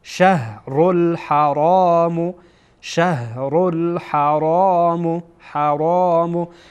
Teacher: را هر دو تا در اینجا پر خوانده میشه.